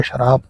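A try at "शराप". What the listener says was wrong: बे से नहीं है, पे से है।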